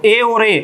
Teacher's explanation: तो ए और ए ये स्वर है पूरे, ए और ए कंठ तालव्य होते हैं।